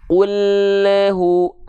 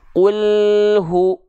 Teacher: lam sukun sering kali memantul karena apa Karena lidahnya keburu turun duluan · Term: bunyi pantulan